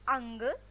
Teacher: अनुस्वार का जब हम उच्चारण करते हैं तो हमारे नाक से ध्वनि निकलती है